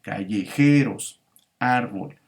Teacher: la palabra árbol solamente tiene dos sílabas, que es la última y la penúltima, y es la penúltima la sílaba tónica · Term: palabra grave